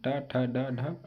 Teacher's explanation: मूर्धा और जीभ के स्पर्श वाले वर्ण को मूर्धन्य कहते हैं। इसके अंतर्गत ऋढ़ और टा वर्ग आते हैं।